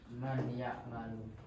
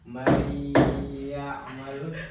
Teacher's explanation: Jadi idgham biguna dibaca dengan cara dengung. Dibaca dengan dengung selama 2 harokat atau 2 ketukan